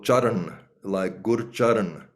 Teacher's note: is is a d sound and a hard d and then an n sound but a backwards tongue n sound